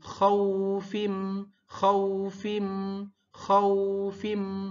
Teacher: Jadi dia adalah madlin ya. Jadi bukan kho-nya yang panjang tapi u-nya yang panjang.